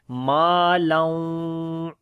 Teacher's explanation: تنوین کے بعد واو آ گئے، ادغام ود غنہ کریں گے ، ما لوں، ہونٹ گول ہو جاتے ہیں واو کے اوپر،